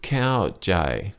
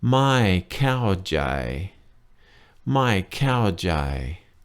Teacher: One word, 2 syllables. Cow is falling and jai is flat tone.